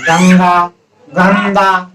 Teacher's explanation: बिंदी का उच्चारण नाक से हुआ, बोलने में आप थोड़ा सा महसूस कर रहा हो।